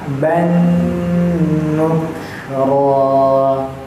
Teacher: jadi ada ini getaran yang keluar dari hidung, getaran ya angin. Jadi kalau dipencet hidung kita nggak bisa ngomong. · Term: dengung